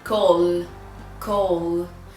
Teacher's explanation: You can feel a vibration. That's because L is a voiced sound.